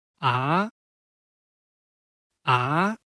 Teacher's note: the pronunciation from medium to high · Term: rising tone